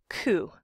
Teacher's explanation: Your vocal folds are not vibrating, which you can feel if you touch your Adam's apple or the top of your head. And it's velar, meaning that the back of your tongue is touching that squishy part at the back of the roof of your mouth. It's where it gets soft, the soft palate it's sometimes called. · It's where it gets soft, the soft palate it's sometimes called. And it's a stop, also called a plosive, because in order to make the k sound, you have to build up a little air pressure and then pop it, let it release.